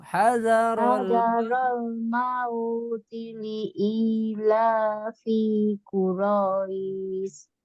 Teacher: Perhatikan li-nya pendek, i-nya panjang.